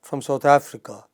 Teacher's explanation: so there is a pause after Africa